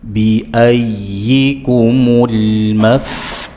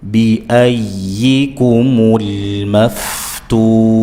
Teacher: Jangan dibaca mirip ya biyai bi a ya, ya bertasydid dibaca dengan nabr penekanan